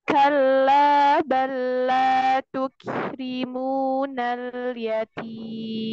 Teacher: Hams pada huruf kaf itu tidak hanya sekedar mengeluarkan nafas, tetapi mengeluarkan nafas yang tipis. Karena huruf kaf itu termasuk huruf istifal.